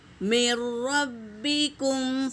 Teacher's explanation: را میں ملائیں گے، نون نہیں پڑھیں گے